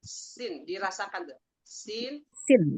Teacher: ujung lidah ketemu dengan pangkal gigi seri bawah